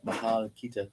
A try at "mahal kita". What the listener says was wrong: Oh, like that.